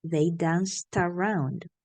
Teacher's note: So the T gets together with the A.